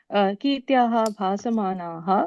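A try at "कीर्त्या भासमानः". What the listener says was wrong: Kirtya bhasamanaha, not visarga.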